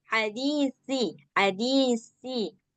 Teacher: Kalau yang si harus keluar lidah. Kalau yang sin, ini baru yang sin kayak kita sin biasa.